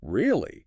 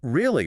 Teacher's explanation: But really, with a low, falling pitch. That's suspicion or annoyance.